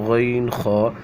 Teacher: غین خا، یہ حلق کے شروع والے حصے سے جو منہ کی طرف ہے وہاں سے ادا ہوتے ہیں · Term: حروف حلقی